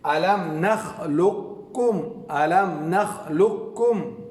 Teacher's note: مکمل یعنی قاف کو بالکل نہ پڑھا جائے. قاف کو بالکل نہ پڑھا جائے بلکہ قاف کو کاف سے بدل کر دونوں کو ملا کر پڑھیں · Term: مکمل ادغام